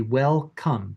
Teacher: the tongue body will be high and then low. So it'll go from touching for the K, it'll go down low to make the uh… in come.